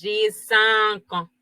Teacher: AN suena como una nasal. Y la S no se pronuncia.